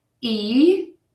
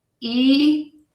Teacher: make sure that the E is long with a very wide open mouth a wide smile e and that the if is very short with relaxed lips that are not as wide e